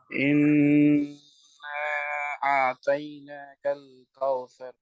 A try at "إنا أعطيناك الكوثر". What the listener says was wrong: Not Taina, Toy. Inna a'طيناك الكوثر. Ra, thick ra. All ra are thick raws. Correct, but ra should be tafkhim. Not flat ra. This is tafkhim ra. After fatha.